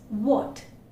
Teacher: the lips are fully rounded when you utter this and the tongue is going backward and the back part of the tongue is literally raised so that is the difference it's not coming forward at all